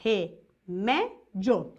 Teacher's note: A penúltima sílaba é a mais forte, é a sílaba tônica.